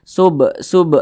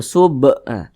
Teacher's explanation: di samping huruf Qalqalah itu ada lima salah satunya huruf ba apabila dia sukun maka dipantulkan huruf ba dipantulkan bacanya sub sub nah mantul seperti itu sub nah ini qqalah sugro